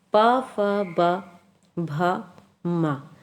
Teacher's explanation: तो प फ ब भ म ये किसकी सहायता से बोले जा रहे हैं, ओठों की सहायता से बोले जाने वाले व्यंजन हैं। जब इनका उच्चारण करते हैं तो ओठ क्या है, एक दूसरे को आपस में स्पर्श करते हैं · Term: ओष्ठ्य